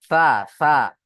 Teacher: জিভের আগা এবং সামনের উপরের দুই দাঁতের আগার সাথে লাগিয়ে উচ্চারণ হবে